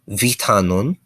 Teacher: The V is pronounced somewhere in between a V and an F.